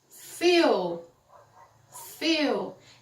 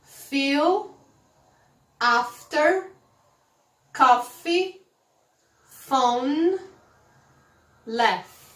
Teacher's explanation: quando você fala f, o seu lábio inferior toca nos dentes de cima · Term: som do f